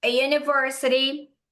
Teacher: os americanos consideram esse U como se fosse um J, porque não é o U purinho, clarinho